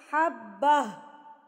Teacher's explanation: اب آخری لفظ یہ گول تا ہے تو گول تا وقف کی صورت میں گول ہا بن جاتی ہے